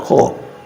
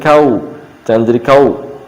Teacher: Qafnya tetap dibaca tebal, qa. Jangan jadi kau